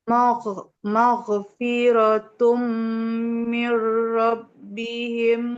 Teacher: aliran nafas suaranya mengalir dan tebal. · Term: huruf ginnya